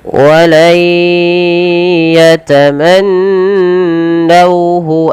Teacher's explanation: kita langsung masukkan suara nunnya kepada huruf ya. Karena di sini ada bacaan idgham bighunah, yaitu ketika terjadi ketika ada nun bertemu dengan huruf bighunah atau huruf idgam bighunah yang empat, yaitu yang pertama ya, wau, mim, dan nun.